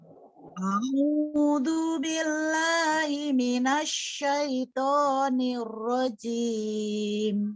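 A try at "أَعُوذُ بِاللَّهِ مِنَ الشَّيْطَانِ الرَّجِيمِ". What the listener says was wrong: Oke, ya, hati-hati dengan du ya. A'udzu billah, bukan du ya, tapi a'udzu, digigit lidahnya. A'udzu. A'udzu.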